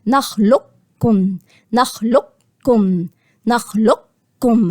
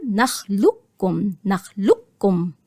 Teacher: هعمل استعلاء أكني بقول القاف وبعد كده أخش على الكاف، لكن الأولى هلغي خالص القاف وهنا هخش على الكاف على طول، نخلقكم، نخلقكم.